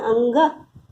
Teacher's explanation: अनुस्वार का उच्चारण केवल नासिक से होता है।